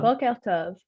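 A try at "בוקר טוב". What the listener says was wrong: Actually, it is not boker tov, it is boker tov. It's a quf. But nobody can really pronounce it the right manner. So it's a qa, okay?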